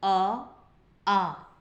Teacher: विवृत स्वर के उच्चारण में मुख द्वार पूरा खुल जाता है